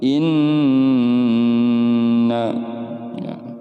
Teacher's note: ini cara membacanya adalah demung dan ditahan 3-4 harokat gunnah kemudian dengung dan dibaca di tahan 3-4 harokat